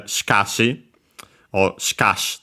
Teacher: Yeah, the accent is on the ka regardless.